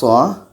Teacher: SH ini letaknya pada ujung lidah menempel dengan bagian atas gigi seri bawah oke ujung lidah menempel dengan bagian atas gigi